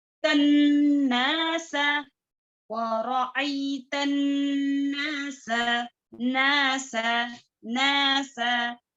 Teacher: ناسا سیٹی کی آواز کریں گے. ناسا نون شدہ کی حالت میں ہے، تا اور نون کو اچھے سے ملانا ہے، اچھے سے مرج کرنا ہے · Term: غنہ